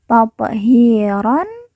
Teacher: ron di ujung karena waqaf atau berhenti berubah menjadi ro dan dibaca panjang 2 harokat